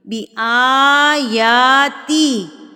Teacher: حمزہ کے اوپر کھڑی زبر ہے اور یا کے اوپر بھی کھڑی زبر ہے تو اس کو ہم 2 حرکات کے برابر کھینچیں گے